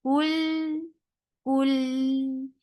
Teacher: Ul for the circle your lips. As you will touch lam with sukoon, you will get the tawassut and you will keep your lips straight.